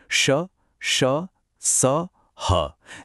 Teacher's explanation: इन व्यंजनों में हवा के रास्ते को बहुत तंग, बहुत संकरा कर दिया जाता है। तो हवा को बाहर निकलने के लिए संघर्ष करना पड़ता है, एक घर्षण पैदा होता है।